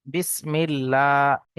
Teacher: আল্লাহ শব্দের পূর্বে জের এসছে, এখানে লামকে বারিক করে পড়তে হবে, অর্থাৎ লা পড়তে হবে।